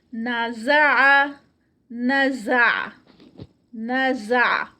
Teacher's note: عین کو پرومیننٹ کریں گے اینڈ پہ اور ہیوی کچھ بھی نہیں ہے, سارے جو لیٹرز ہیں وہ لائٹ ہی ہیں.